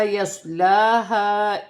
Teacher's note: یہاں الف مدہ ہے، الف سے پہلے زبر آ رہی تو الف مدہ بنے گی اور کھینچ کر پڑھا جائے گا ایک الف کی مقدار. سواد ساکن ہے، سواد کو موٹا اور سیٹی کے ساتھ پڑھا جائے گا. لام پر کھڑی زبر ہے، اسے ایک الف کی مقدار کھینچ کر پڑھا جائے گا.